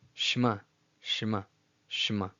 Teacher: you don't overemphasize the SH'VA as it's never supposed to be pronounced as its own syllable